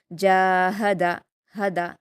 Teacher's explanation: यह हा जो है वो सीने की तरफ से अदा होने वाली हा है। इसलिए आप हलक के दरमियानी हिस्से से नहीं अदा करेंगे। ये छोटी हा है।